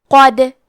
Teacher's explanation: یہاں دال کا حکم ہے قلقلہ. قلقلہ کا معنی ہے حرف ساکن کو ہلانا، تو ہم حرف دال کو ہلاتے ہوئے یہ کلمہ کو پڑھیں گے